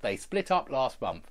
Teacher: Even though it's past tense, we don't have an id on the end. We don't. It's just they split up last month.